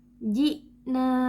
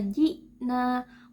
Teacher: Nah, di sini contohnya adalah huruf hamzah. Ketika kita baca ji'na, maka otomatis suara kita akan terputus saat kita mengucapkan huruf hamzah. Ji tidak bisa kita alirkan. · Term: sifat syiddah